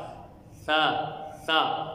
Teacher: زبان کی نوک اور ثنایا علیہ کا کنارہ، یعنی اوپر والے دانتوں کا کنارہ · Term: نرم حروف